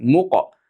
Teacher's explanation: sukunlik qof sukunlik bo'lsa qalqala bo'ladi